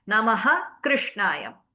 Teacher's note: Visarga, letting go of air, but now your tongue is moving to the Kanthya position. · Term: Jihva Mulyaha